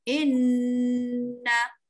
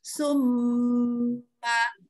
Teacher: kita kena ajar dia 3 harakat. Baru jelas dengung dia.